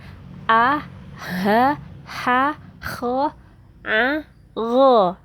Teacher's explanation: tempat keluarnya suara itu ada di kerongkongan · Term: huruf halqi